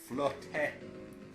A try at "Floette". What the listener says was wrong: there's no T. Floette. No, you don't pronounce it like that. I think it's supposed to be French.